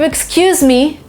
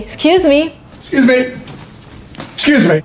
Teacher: So there is no eh in the beginning